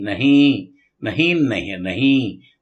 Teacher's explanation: نون غنہ ناک سے پڑھیں گے